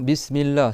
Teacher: Donc le s il siffle comme en français